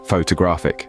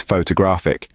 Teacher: photographic, with the stress bouncing on the third syllable